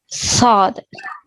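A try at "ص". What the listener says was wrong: So, very good, mashallah.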